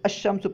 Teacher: یعنی الف لام میں جو لام ہے اس کو حرف شمسی میں مدغم کر کے پڑھیں گے، یعنی لام کا تلفظ نہیں کریں گے۔ جیسے الشمس ہے نا، یہاں پہ دیکھیں لام ہم نہیں پڑھ رہے ہیں، الشمس نہیں کہہ رہے ہیں بلکہ الشمس پڑھ رہے ہیں، کیونکہ شین جو ہے یہ حروف شمسیہ میں سے ہے۔